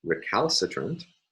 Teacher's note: the primary stress again falls on the third last syllable